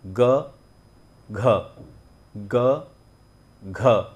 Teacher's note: ग में अगर हम ह का उच्चारण भी अगर जोड़ देते हैं तो वो हो जाता है घ